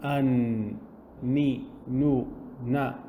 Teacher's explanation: you notice that your tongue is touching somewhere specific, and it's touching just behind your top teeth, and there is a nasal sound. There is some air that's coming out and sound that's coming out from your nose, from behind your nose. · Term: noon